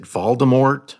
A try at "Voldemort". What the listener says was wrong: The T's silent. Voldemort.